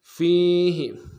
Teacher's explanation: فا کو یا کے ساتھ ملانا ہے، یا مدہ ایک الف دار میں کھینچیں گے